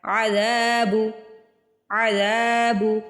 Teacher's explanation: زال کو کھینچ کے ادا کرنا ہے، زبر کے بعد الف آ رہا ہے۔